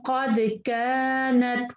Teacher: کاف کو 2 سیکنڈ پر ہم آگے لمبا پڑھیں گے خالی الف کی وجہ سے